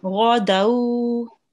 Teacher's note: this is a thick letter and we read it with our mouth rounded